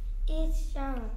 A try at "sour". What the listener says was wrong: Shower가 아니고 sour.